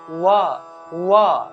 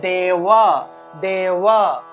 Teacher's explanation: অর্থাৎ ব ঠোঁট লাগাতে হয় আর যখন আমরা অন্তস্থ বচ্ তখন ঠোঁট না লাগিয়ে ব উচ্চারণ করলে যে উচ্চারণটা আসে সেটাই হলো অন্তস্থ ব এর উচ্চারণ